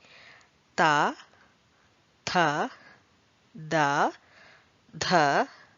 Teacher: Then coming to the next one, that is dental. Dental consonants articulated with the tongue against the upper teeth.